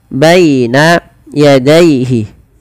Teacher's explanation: Lafal baina dan daaihi ini kedua-duanya dibaca dengan bacaan lin yaitu dengan melembutkan bunyi suaranya